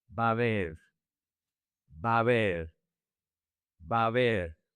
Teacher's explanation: The two A's connect, and the these A's connect as well. The H is silent.